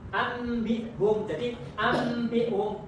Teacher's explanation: jadi ambihum nunnya itu berubah menjadi huruf mim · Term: bacaan iqlab